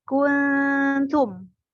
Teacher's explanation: Jadi dibacanya samar. Suara nun sukun seakan-akan bentar lagi nyampe ke suara ta. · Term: ikhfa hakiki